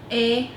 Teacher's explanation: if you listen carefully, you'll hear she's going up and down.